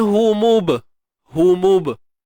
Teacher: Ni ba yang bertanda sukun, qalqalah sughra, lantunan kecil saja.